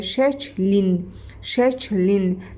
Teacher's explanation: Saytla başlanan şəkil çatdırıldıqda şəkil sözünün kökündəki İ saiti düşmüş olacaq. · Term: son sayt düşür